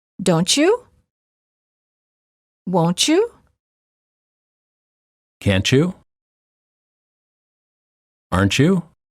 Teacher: t+ Y is usually pronounced as CH as in church don't you won't you can't you aren't you